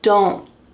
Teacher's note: So you're making a slight N sound, but you wanna make sure that that T is stopped.